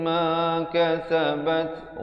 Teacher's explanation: Bat ada hamasnya, anginnya di situ